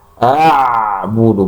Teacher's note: huruf ain itu bukan huruf tafkhim atau tebal, tapi huruf istifal, huruf tipis.